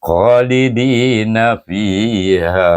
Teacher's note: kha alif istilah, angkat pangkal lidah sebutnya